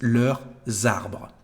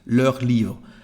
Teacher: you can hear actually the sound S or Z, Z for the liaison between the two words, leurs arbres.